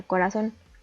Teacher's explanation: la sílaba tónica recae en la última sílaba termina en n por lo que debemos acentuar la tenemos otra